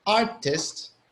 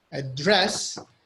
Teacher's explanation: We have the pattern of artist, which the first syllable is stressed, and then we have the opposite, address, where the second syllable is stressed.